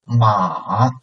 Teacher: So the first part is the most important part. So first make it a downcoming and then a little bit upcoming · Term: third tone